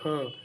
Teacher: कंठ के भीतर स्थित है, सघोष और महाप्राण है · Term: सघोष महाप्राण